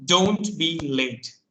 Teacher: giving instructions or commands, we use falling tone